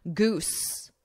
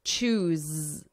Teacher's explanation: But it's the difference between that S, the unvoiced, and then the Z, the buzzing, the voiced.